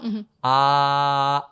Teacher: we start from the open mouth, ah, and then we slowly close it, ow. And then we close the mouth completely and we get Yeah.